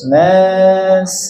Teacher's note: Nas ya jangan o bunyinya jangan o na a vokal a